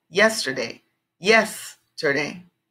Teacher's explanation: They're just showing the stress is in a different place. So with these three-syllable words, the strong accent or the strong sound is on the first part.